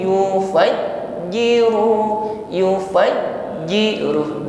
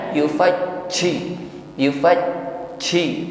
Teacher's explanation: ketika menekan huruf jim tidak ada desis tidak ada nafas yang menyertainya sifatnya syiddah jahr tertahan udara